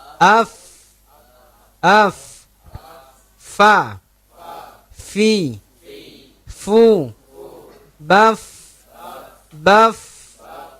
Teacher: Ada mengalir nafas ketika mengucapkan huruf itu. Jadi ada mengalir nafas kita, terdengar aliran bunyi nafas kita ketika kita mengucapkannya itu. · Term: al-hams